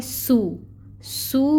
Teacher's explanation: آگے آ رہا ہے سو میں آپ دیکھیں واو ساکن ہے اور اس سے پہلے پیش کی حرکت ہے، تو یہاں پہ واو مد کا رول ہو رہا ہے۔ اس کو 2 حرکت لمبا پڑھیں گے اور اس سین میں سٹی بھی لے کے آئیں گے جو اس کی صفت ہے، اور پیش کو ادا کرنے کے لیے آپ اپنے لپس کو اچھے سے راؤنڈ کریں گے، ٹھیک ہے۔